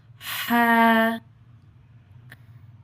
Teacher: جو ہا ہے یہ حلقی حرف ہے، حلقی، حلق سے ادا ہوتا ہے، حلق کے درمیانی حصے سے